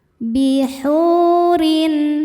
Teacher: Cara bacanya panjang dua harakat. Bihurin ro dibaca secara tarqik karena berharakat kasrah tanwin. Cara bacanya ro ditipiskan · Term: tarqiq